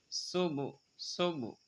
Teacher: সিন শীষ দিয়ে পড়তে হবে